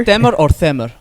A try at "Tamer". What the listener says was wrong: Tamer. Tamer. It's not Tamer. Tamer, yeah.